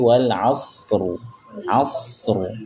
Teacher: Huruf ra yang disukunkan karena waqaf dan dibaca tafkhim tebal.